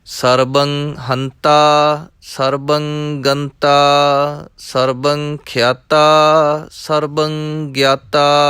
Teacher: ਬੱਬੇ ਨੂੰ ਟਿੱਪੀ ਲੱਗੀ ਹੋਈ ਹੈ। ਸਰਬੰ ਥੋੜ੍ਹਾ ਜਿਹਾ ਪੋਲਾ ਕਰਨਾ ਹੈ। ਜੇਕਰ ਥੋੜ੍ਹਾ ਜਿਹਾ ਜ਼ਿਆਦਾ ਭਾਰਾ ਹੋ ਗਿਆ, ਬੱਬੇ ਦੇ ਦਾਬ ਆਈ ਅਤੇ ਭੱਬਾ ਬਣ ਜਾਏਗਾ।